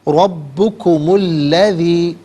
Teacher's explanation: اسے الذی کے ساتھ ملائیں گے تو میم پر پیش ہوگا، اسے الذی کی لام کے ساتھ ملا کر درمیان میں سے الف نی حمزہ کو حذف کریں گے۔